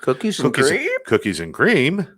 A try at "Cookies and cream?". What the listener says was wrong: No, the cookies and cream is a statement. It's